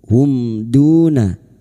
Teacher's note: mim sukun bertemu dal, idhar safawi. Mim sukun dibaca jelas tanpa mendengung. Hum duna, du duma bertemu sukun dua harakat mad tabi'i.